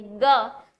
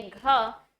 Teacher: जब आप बोलेंगे ग तो प्राणवायु कम प्रेषित हो रही है, और जब आप बोलेंगे घ तो प्राणवायु अधिक प्रेषित हो रही है।